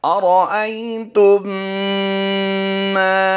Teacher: मीम साकिन के बाद दूसरी मीम आई है तो यहाँ पर गुन्ना आनी की आवाज़ देंगे, यानी मीम मुशद्दिद आएगी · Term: इदगाम शफवी